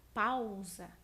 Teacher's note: A letrinha A começa com um som mais forte, depois a letrinha U, ela vai com um som mais fraco e, portanto, nesse caso, a letra A assume o papel de vogal e a letra U assume o papel de semivogal. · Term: ditongo